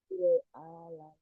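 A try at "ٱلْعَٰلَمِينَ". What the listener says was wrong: Ainnya kurang. Alamin. Sama ya. Ha, ain, sama.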